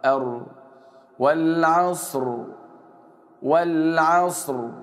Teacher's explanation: واحاول ان انا اخفي التكرير بتاع الراء